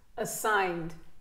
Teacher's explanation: petit E atténué, assigned. Et après, boum, ça remonte sur l'accent tonique.